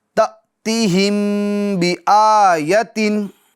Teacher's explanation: میم ساکن کے بعد با آ رہا ہے تو یہاں پر اخفاء شفوی ہوگا، یعنی گنہ کر کے پڑھیں گے